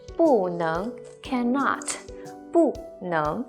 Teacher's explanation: And 能 is can, second rising tone